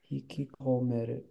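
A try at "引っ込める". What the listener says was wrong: So it's hiku is the verb. But the ku has turned into a small tu, so there's not two ku k's in there. Hi, hikomeru.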